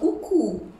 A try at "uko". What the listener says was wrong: Not uku, mommy. Uku is waist. Okay? Igbo words. One word in Igbo can mean various things. Okay? So this is not uku, it is uko.